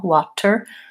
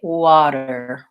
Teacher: We use what's called a flap T on that T sound. It sounds pretty much like a light D.